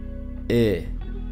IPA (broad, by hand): ɪ